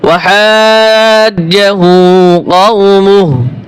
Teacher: ওয়াকফ করলে এই যে উল্টো পেশের টান, হার সাথে যে উল্টো পেশ হয়, এটা টান হয় না